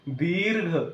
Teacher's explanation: इ वर आपण काय करतो थोडासा जोर देऊन तिथे इ वर थांबलेलो असतो म्हणून या ठिकाणी काय असते दुसरी मात्रा दोन मात्रा वेळ लागलेला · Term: दीर्घ उच्चार